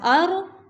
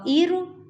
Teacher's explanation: را ساکن سے پہلے زیر ہے تو یہ را باریک ہوگی، اور را ساکن سے پہلے زبر ہے تو یہ را موٹی، را ساکن سے پہلے پیش ہے تو یہ بھی را موٹی ہی پڑھی جائے گی۔ · یہاں پر را جو ہے جو زبر والی ہے وہ موٹی ہوگی اور پیش والی موٹی ہوگی، جبکہ زیر والی یعنی را ساکن سے پہلے زیر ہے تو یہ را باریک ہوگی، اور را ساکن سے پہلے زبر ہے تو یہ را موٹی